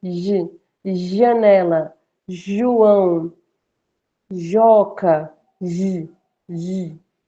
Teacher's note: É porque é até estranho a gente falar o som do J, J, como em janela, João, ó, J, é esse chiadinho. Não tão forte quanto Sh, mas um pouco mais leve. J, janela, João, Joca, J, J.